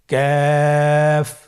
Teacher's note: কাফ উচ্চারণের ক্ষেত্রে অবশ্যই পাতলা করে উচ্চারণ করতে হবে এবং তিন আলিফ টেনে পড়তে হবে।